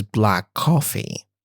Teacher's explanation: with the K sound being assimilated into the following C sound